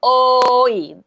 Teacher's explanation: The O is longer than the E.